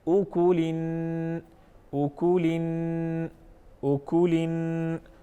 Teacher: ایک الف کے برابر آواز کو ناک میں لے کے جائیں گے، آواز کو ناک میں ٹھہرائیں گے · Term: غنہ